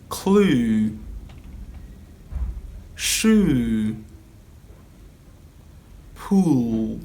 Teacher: it's a back closed vowel sound it's also a long monophthong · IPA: /u:/